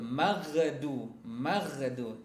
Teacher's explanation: Ghairil kemudian juga dia bukan termasuk huruf qalqalah kan ya. Jadi dibaca jangan sampai memantul. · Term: huruf gha